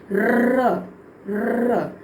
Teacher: र हमारी जो टंग है वो वाइब्रेट कर रही है, र। कुछ बच्चे जो स्टैमर करते हैं, जब तक वो र व्यंजन की प्रोनाउंसिएशन सीखते हैं उनकी बहुत स्पीच क्लियर हो जाती है, क्योंकि इसमें टंग हमारी वाइब्रेट कर रही है, र र।